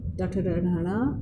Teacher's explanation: ट वर्ग का उच्चारण स्थान मूर्धा